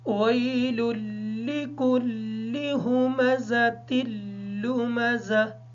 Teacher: اس لام کو دوسری لام کے ساتھ جب ملائیں گے تو اچھے طریقے سے دونوں لام کو کلیئر کر کے ادا کریں گے، کیونکہ اگر ہم نے واضح طور پہ ان کو ادا نہ کیا تو ایک ہی لام ادا ہو جائے گا۔ ہا کو ادا کرتے وقت خیال رکھیں گے ہا کی آواز ادا نہ ہو۔